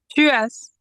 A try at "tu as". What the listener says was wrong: we will not pronounce it as but we'll pronounce it as ah. We'll not put another S.